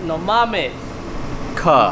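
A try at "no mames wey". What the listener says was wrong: No, you don't say no mames ka. You say no mames way.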